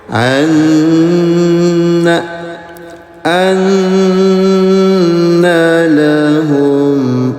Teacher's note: Nun bertasydid namanya guna dengungkan selama 2 harokat